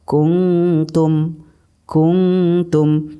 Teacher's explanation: suara nun mati dibaca antara idhar dan idgham contoh qumtum kungfu Tum jadi non matinya masih masih agak sedikit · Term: ikhfa aqrob